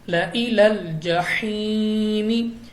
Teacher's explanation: سے پہلے زیر ہے تو ہم نے پڑھ رکھے ہیں کہ یا مدہ ہوتا ہے، تو ہم نے 2 الف یعنی 2 سیکنڈ تک کھینچ کر پڑھنا ہے